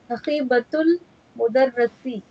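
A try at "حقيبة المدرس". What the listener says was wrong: Remember that Ra has kasra.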